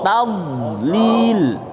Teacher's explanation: Taknya tetap tipis, jangan tod.